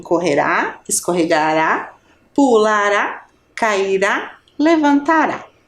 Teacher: palavras oxítonas né tem a última sílaba mais fortes mais forte terminada em A